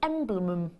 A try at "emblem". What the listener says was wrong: it's only two syllables